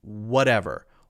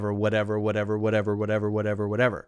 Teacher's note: the ridge right between the hard palate and the soft palate you're tapping your tongue there very quickly in the position of the D but it but lighter right whatever whatever whatever whatever whatever whatever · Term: light D sound